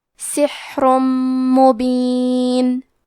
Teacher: آخری میں را پہ تنوین پیش ہے، پھر حرف المیم آتا ہے. کلمت مبین، یہاں حکم ہے ادغام بغنہ، تو ہم یہ حکم کو غنہ اور تشدید کے ساتھ ادا کریں گے